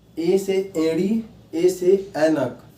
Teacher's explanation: ये एक ऐसे वर्ण है जिनका उच्चारण स्थान क्या होता है, कंठ होता है प्लस तालु होता है। क्या होता है, कंठ प्लस तालु, जो मिलकर क्या होते हैं, कंठ तालव्य।